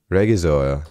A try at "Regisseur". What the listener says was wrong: That's actually closer. Actually, I think this word is from another language. We don't pronounce the G, we say regisseur. Regisseur.